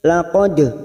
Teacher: dal sukun yang mati asli di tengah kalimat, qalqalah sughra, jangan lupa dimantulkan